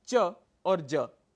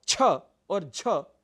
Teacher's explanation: प्रथम और तृतीय वर्ण च और ज अल्पप्राण है वैसे ही छ और झ महाप्राण है